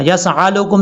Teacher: सीन के बाद जो हमजा है इसको आइन नहीं पढ़ना